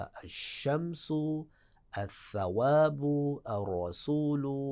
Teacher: لام لکھا جائے گا، پڑھا نہیں جائے گا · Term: ادغام